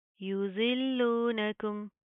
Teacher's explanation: ज़ोद मोटे हरूफ में से मुंह को प्रॉपर पुर करके इसकी अदायगी होगी, इसके आपने सीटी से बचाना है